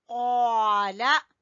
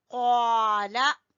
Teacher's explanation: कौफ जबर अलिफ कौ, लाम जबर ला, कौला। कौ को खींचेंगे लेकिन लाम को छोटा पढ़ेंगे।